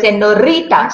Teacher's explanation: Certain languages in Europe, they do have the trill R. We call it the trill sound, where the tongue vibrates.